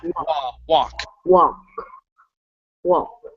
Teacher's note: Instead of walk, it's wah. Give me an ah sound.